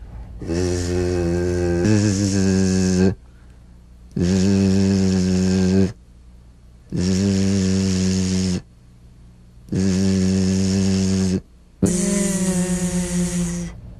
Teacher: feel a smooth, strong vibration in the teeth and in the front of the tongue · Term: Z sound